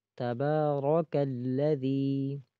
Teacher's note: را زبر را، تو را بھی متحرک ہے، کاف بھی متحرک ہے، ان دونوں کو نہیں کھینچنا